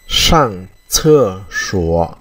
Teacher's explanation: Sang đây chúng ta đọc hơi cong lưỡi.